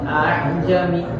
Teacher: Yang pertama jelas a'jami, tapi nggak boleh dipanjangkan. Tidak boleh terlalu dipanjangkan karena di sini ada. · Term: tashil